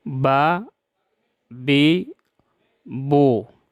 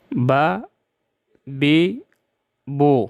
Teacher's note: با کو زبر زیر پیش کے ساتھ یوں ادا کریں گے: با زبر با، با زیر بی، با پیش بو، با بی بو۔ سخت آواز کے ساتھ ادا ہو شدت کی وجہ سے، اس میں صفت شدت ہے